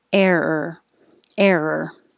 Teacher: you curl your tongue back for the first air and then hold it there